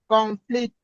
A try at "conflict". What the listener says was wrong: No, you have to raise the stress on the first syllable. No, you are stressing 2 syllables instead of 1. No, conflict.